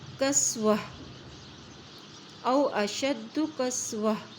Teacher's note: جو زبر والی تا ہے وہ ہا میں چینج ہو جائے گی اس کی ساؤنڈ